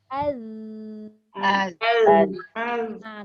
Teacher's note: Az. Kalau baca az dia ada bunyi angin tu salah. Dia mengeluarkan suara. Jadi bunyinya az. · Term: zal